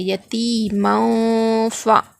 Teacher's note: تنوین کے بعد حروف اخفا میں سے فا آ رہا ہے یہاں پر، تو یہاں پر کیا کریں گے؟ نون کی آواز کو ناک میں چھپا کر پڑھیں گے